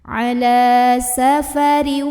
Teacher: Ra-nya ini kita bunyikan dengan tarqiq ya. Karena ra-nya berbaris di bawah kasrah tanwin. Maka bacanya tipis, pangkal lidah tidak perlu dinaikkan.